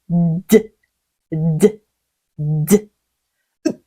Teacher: 이 D 발음이 살짝 어려운데요. 윗니바로 뒤쪽에 혀 끝을 갖다 대고요. 혀 끝 부분이 입천장에도 살짝 닿을 거예요. D, D, D. 공기를 잠시 막았다가 그 울림을 강하게 D, D 터트려 주시는 게 중요해요.